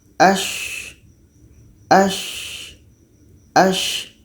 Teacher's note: Tengah lidah menempel dengan langit langit mulut jadi kita baca as as as ada suara yang mengalir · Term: Sya